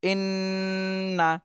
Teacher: মিম এই দুইটা হরফে তাসদিদ থাকে তাহলে ওয়াজিব গুন্না করতে হয় এখানে হরকতের বামে নুনে তাসদিদ এসেছে এজন্য ওয়াজিব গুন্না করতে হবে